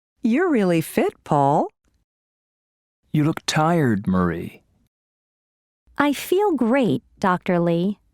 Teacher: There is usually falling intonation and a pause before the name.